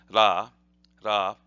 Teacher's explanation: the R sound in Japanese is almost like a D plus an R together, ra, ra. So ha, ra, and then this is e, e.